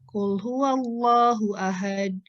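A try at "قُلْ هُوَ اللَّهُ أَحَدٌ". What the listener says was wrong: Pelan atuh, dalnya di mana itu? Jangan ditelan dalnya. Qul huwallahu ahad. Ahad. Jangan ahad. Jangan ditahan. Ahad. Ahad. Ahad. Ahad. Ahad. Jangan ditelan dalnya. Jangan ahad. Ahad ditelan itu.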